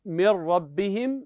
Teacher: هنا لا وجود للنون تماما لا صفه ولا نطقا حينما نقول من ربهم نحن ادغنا النون ادغاما كاملا وسياتنا الادغام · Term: الادغام الكامل